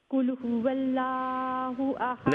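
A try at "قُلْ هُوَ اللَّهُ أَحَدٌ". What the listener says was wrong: नहीं, ये देखिए, कुल हुवल्ला नहीं है, अल्लाह का नाम पुर आवाज है। हुवल्लाह, कुल हुवल्लाहु अहद।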